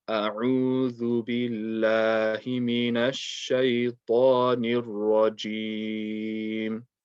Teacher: you want to make sure the Ain is clear, and you want to make sure that the Dhal is not Zal.